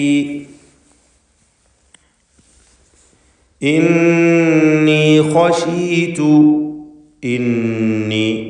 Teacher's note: ഇന്നി ഖശീതു ഇന്നി നൂൻ മുഷദ്ദദയെ മണിക്കണം, ഷദ്ദുള്ള നൂനിനെ മണിച്ചുകൊണ്ട് ഉച്ചരിക്കുക